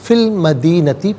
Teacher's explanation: یتیمین فی المدینتی، فا کے نیچے زیر، اس سے المدینتی کے لام ساکن کے ساتھ ملائیں گے، درمیان میں سے الف یعنی حمزہ کو حذف کیا جائے گا، فی المدینتی پڑھیں گے